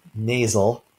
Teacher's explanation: you may feel a puff of air out of your nose when you say the first a in nasal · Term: nasal vowel